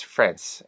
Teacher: On the other hand, if I am reading from a book and the word is friends, well, I can't change the word exactly, so I'd probably just put in a hard S, friends, an unvoiced S, unlike the Z sound